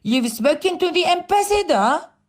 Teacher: بالضبط هو يطابق أو يشابه الستيتمنت except for the final rising question intonation. فقط إنه أنا بنهاية الجملة I raise my tone. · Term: rising intonation